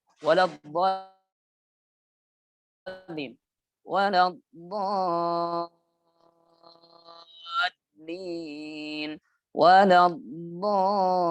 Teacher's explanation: panjangnya kurang lebih itu 6 harokat ditambah dha-nya itu huruf tasydid, yang mana tasydid itu artinya harus ditekan. Juga ada lam di situ tasydid dan itu juga harus ditekan.